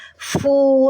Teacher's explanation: Huruf fa doma. Fu. Ada napas keluar. Panjang. Fu.